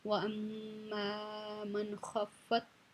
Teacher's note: نون ساکن ہے، اس کے بعد خا حروف ہلکی میں سے آ رہی ہے، تو یہاں پہ ہم اظہار کر کے پڑھیں گے